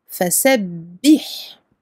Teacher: Donc on ouvre bien la bouche pour les fathas. Et ici on appuie sur le ba parce qu'il porte une shadda. On double le ba. فسبح. Le ha, rakhawa, on lui donne son temps d'écoulement du son.